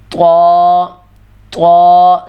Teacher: ناک کے اندر اس کی آواز بالکل بھی نہ جائے. طا طا ساری آواز آپ کی منہ سے آئے، ناک میں آواز اس کی بالکل بھی نہ جائے.